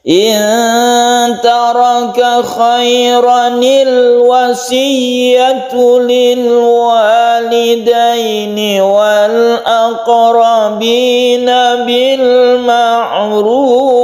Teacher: kita membacanya pendek roknya, kemudian nunnya dikasrohkan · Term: nun iwat